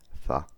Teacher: dento-alveolar non-sibilant fricative tha